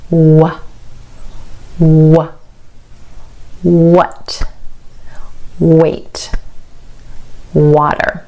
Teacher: your lips actually round out in the shape of an O or a circle there's no contact between your teeth and your lip · round out in the shape of an O or a circle there's no contact between your teeth and your lip as you make the wor sound in fact your teeth and your lips aren't even in close